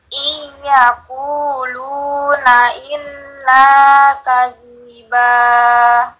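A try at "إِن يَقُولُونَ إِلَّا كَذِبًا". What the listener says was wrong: D-nya pendek, kadiba. Ini harus ditahan. I 2 ketukan, ulangin.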